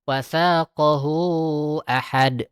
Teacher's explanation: Setelah ada hu itu, dia ada hamzah. Maka dia dibacakan dengan panjang. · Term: mad silah kubro